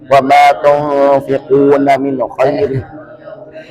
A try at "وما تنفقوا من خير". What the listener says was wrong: Tapi salah kunya itu.